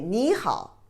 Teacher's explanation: you would say the first character second tone is not the third tone